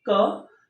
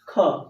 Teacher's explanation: क बोलिए हवा कम निकलेगा